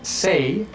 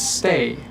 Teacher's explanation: A common example of this is the word say versus stay. The difference between say and stay is actually a little pause right when the T happens.